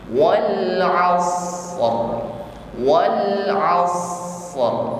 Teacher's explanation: Setelah kita sempurnakan sifat rakhawah pada huruf shad, baru diikuti sifat huruf ra, yaitu takrir, bergetar. Wal 'asr, wal 'asr, as kita alirkan, baru ditutup ra dengan getaran.